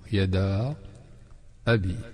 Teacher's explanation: Il y a le alif qui est un allongement et on l'a encore allongé pour permettre de mieux prononcer la hamza. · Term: med jaiz munfasil